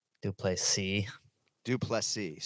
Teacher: So we emphasize the last syllable